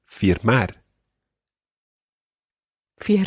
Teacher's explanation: you should make sure that you're trying to get that slight flick on the r in there